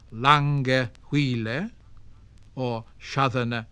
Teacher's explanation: falling rhythm, with stressed and unstressed syllables alternating